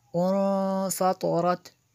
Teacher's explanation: نون ساکن کے بعد فا حروف اخفا میں سے ہے، تو یہاں پہ اخفا ہوگا، اس لیے ہم نے غنہ کیا